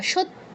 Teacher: তয়ের মতো উচ্চারণ করছি, কিন্তু এখানে যে একটা ইয় ফলা আছে এটাকে কোনো পাত্তাই দিচ্ছি না